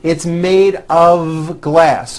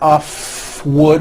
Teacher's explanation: mistake even though the word of is spelled with an f we pronounce the word of with a voiced v